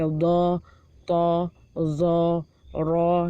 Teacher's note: Pada huruf-huruf tebal seperti do, to, zo, ro itu tidak boleh miring ke A karena dia O